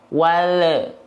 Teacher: Lamnya dia belum tuntas. Lidahnya turun duluan dan huruf berikutnya belum dilafalkan, akhirnya ada suara tambahan berupa pantulan. Wal jangan turun dulu sebelum melafalkan huruf berikutnya.